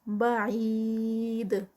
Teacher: بعید اور اینڈ پہ دال کا قلقلہ اور 4 counts کا اسٹریچ ہے